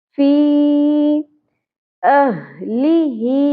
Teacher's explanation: ह दोनों जगहों पर अक्सा हलक से अदा होगा